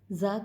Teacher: زا کی ادائیگی نوک زبان اور ثنایا سفلا کے جو کنارے ہیں، ثنایا سفلا یہ میں نے بتایا تھا، نیچے والے جو دانت ہے، سامنے والا جو حصہ ہے ان کا، اس کو ثنایا سفلا کہتے ہیں. زا کی ادائیگی نوک زبان اور ثنایا سفلا کے کنارے سے ہوگی